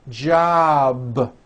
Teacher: a voiced sound job it's not jump with an unvoiced p keep the voicing going throughout the whole word job with a voiced be ending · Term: voiced B ending